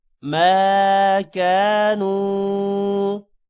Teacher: میم کے بعد الف ہے لمبا کریں گے اور کاف کے بعد الف ہے اس کو بھی لمبا کریں گے